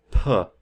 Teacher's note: is stopped and released so a sound like P we close our lips and then we let out a puff of air so p is a stop because we have stopped air flow